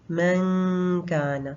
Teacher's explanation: मीम के बाद हम काफ के मखरज पे जाएंगे और बीच में हम 2 काउंट्स गुन्ना करेंगे, यानी नून को हमने छुपा के पढ़ा। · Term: इख्फा